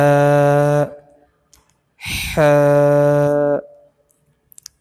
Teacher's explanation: یہ حلق کے درمیان سے بالکل بیچ سے ادا ہوگا، بالکل درمیان سے، تو جو ہے ح جو ہے صحیح ادا ہو جائے گا۔